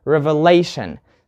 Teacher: You put the stress on lay, revelation.